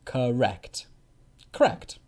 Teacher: the first syllable, ka, is a weak ka. And then the second syllable is stressed.